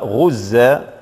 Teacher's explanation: في حالة الوقف يقرأ الألف بمقدار حركتين وبالتقليل، ثم في حالة الوصل سنطبق قاعدة من قواعد النون الساكنة وهي هنا الإدغام غزا لو كانوا، نعم إدغام بغير غنة.